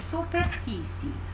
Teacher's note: perceberam que fi é a sílaba tônica